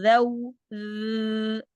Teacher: जुबान की नोक सामने वाले दांतों के किनारों से इस तरह लगानी है कि थोड़ी सी जुबान दांतों से बाहर आ जाए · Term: नरम हरूफ